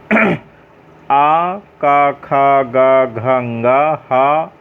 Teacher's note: इसका उच्चारण क्या स्थान क्या होगा इन सभी का? इनका उच्चारण स्थान कंठ माने गला।